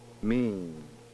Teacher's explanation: When saying the word mean, however, the port is open throughout the entire production. Mean. It appears that the velum does not have time to close for the vowel sound before it must again open for the final nasal consonant. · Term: nasalization of vowels